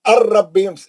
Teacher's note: नून का दूर दूर तक शायबा नहीं रहना